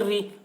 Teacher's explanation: را کے نیچے زیر ہے، اس لیے را کو باریک پڑھیں گے